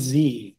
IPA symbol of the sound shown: z